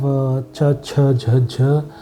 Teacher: you use the blade of the tongue against the upper gum ridge